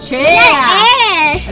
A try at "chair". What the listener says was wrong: No, ch. And then air. Ch-air. Chair.